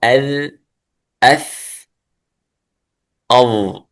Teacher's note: مخرج الضاء والذال والثاء من طرف اللسان مع أطراف الثنايا العليا. تنظرون أذ أث أض تخرج من طرف اللسان مع طرف الثنايا العليا.